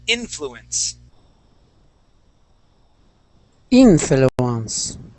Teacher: with the accent at the beginning